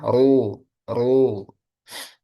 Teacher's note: Ketika domah ru ru. Nah, rnya dibaca tebal. Jadi kadang tebal kadang tipis. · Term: ro